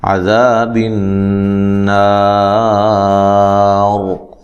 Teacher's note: وقف کی صورت میں را کو موٹا پڑھنا ہے